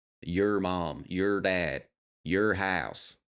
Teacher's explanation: very unique when we say your or or anything like that a lot of them will pronounce it like er